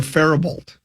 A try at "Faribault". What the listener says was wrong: But it is, there is no LT sound there. It's supposed to be Faribault.